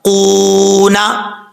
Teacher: اب قاف کے بعد واو ہے، واو ساکن سے پہلے پیش تو واو مدہ ہوتا ہے، ایک الف کی مقدار اس کو لمبا کیا جائے گا